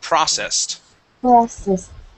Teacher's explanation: this word is processed with the accent at the very beginning of the word